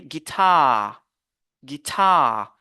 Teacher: ce n'est pas sur la première syllabe on se focalise mais c'est sur la deuxième syllabe